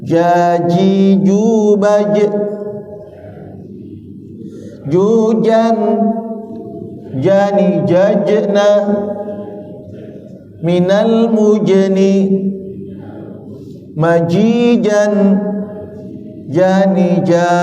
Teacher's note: Ini enggak. Ja agak ditahan, ditarik, ya. Ja. Dan dia mantul kalau disukun. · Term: jim